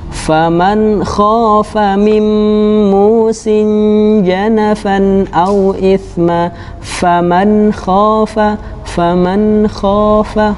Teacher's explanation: dalam pengucapannya tanpa disertai dengan gunnah ataupun dengung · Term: idhar